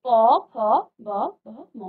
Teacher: अब आप प फ ब भ, तो आप महसूस कीजिए, आप पहले बोलिए उच्चारित कीजिए इसको, तो आप इसका जब उच्चारण करेंगे तो आपके होठों से ये आवाज आ रही है, आपके होठ आपस में स्पर्श कर रहे हैं तभी आपकी आवाज क्या आ रही है, प फ ब भ म। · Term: ओष्ठ्य